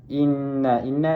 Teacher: Inna inna ni adalah wajibul ghunnah. Dibaca dengung dua harakat. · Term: wajibul gunnah